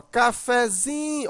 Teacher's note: o fé ainda é pronunciado um pouco forte, não tão forte como o zim, mas também não tão fraco como o K. ela é um intermediário. · Observa que o zin, né, você demora mais · Mas no cafezinho, a sílaba mais forte é o zin. Mas observa que o café de cafezinho, o fé, ainda é pronunciado um pouco forte. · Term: subtônica, sílaba tônica